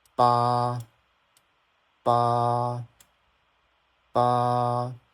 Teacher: This is a a and it's first tone. So it goes like the tone is super flat